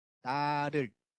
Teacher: 를 발음할 때 보면 일단은 혀를 완전히 붙입니다. 위에 붙였다가 바로 떼요. · 혀를 위에 그 입천장 부분에 살짝 톡 치고 내려옵니다. 톡 치고 내려오면서 나오는 소리가 바로 이 설타음 혹은 탄설음이라고 보시면 돼요.